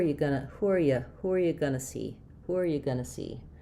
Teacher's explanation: So gonna is an abbreviation of going to, where we lose the T entirely, we change to a schwa, we lose the NG.